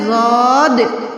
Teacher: जबान की करवट और ऊपर के दाढ की जड़ से अदा होता है